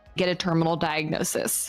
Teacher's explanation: it sounds like she's smiling while she says it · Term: vocal fry